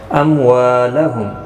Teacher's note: اموالہم، میم ساکن کے بعد واو آیا ہے اور یہاں پر میم ساکن کے بعد را آئے، ظاہر شفوی ہوگا دونوں جگہوں پر۔ وا الف مدہ ہے، ایک الف کی مقدار کے برابر کھینچ کر پڑھیں گے